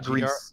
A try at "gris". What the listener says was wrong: GRIS. Gris in French. I don't think you pronounce the S. is gris. Grease.